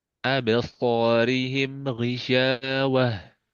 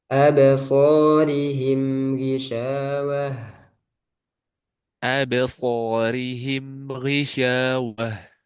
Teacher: ada sedikit pantulan ya mimnya